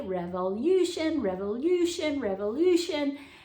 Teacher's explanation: So this is where you sometimes sounds like it says ooh to people. It's really saying you, but when we say it quickly, revolution, revolution, revolution, it just starts slurring into ooh